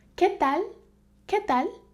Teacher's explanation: I don't say que, I say que. And also for the L, it's not pronounced from the back of my mouth. Instead, my tongue is against my teeth.